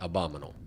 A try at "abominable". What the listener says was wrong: No, there's another b in there. Abominable.